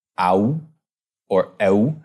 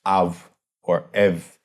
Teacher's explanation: historically in Greek, that was an ow or ow sound, but around this time it came to be pronounced as av or ev